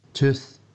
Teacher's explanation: In the younger boy, you can hear how he definitely has a Glaswegian u, but he's also got this f at the end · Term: f for th